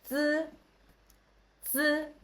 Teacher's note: It's dental and unaspirated sound. We can tell before we pronounce, we can see you need to use your tongue to touch the back of the front teeth.